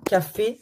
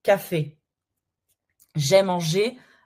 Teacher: Le E, that's the closed one, as in café.